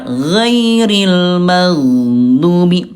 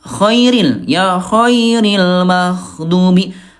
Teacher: Huruf yang keluar di atas tenggorokan ada ghain, ada juga kha · Bedanya kalau ghain dia jahar tidak ada udara, ya kalau kho dia alhams Bunda keluar udara.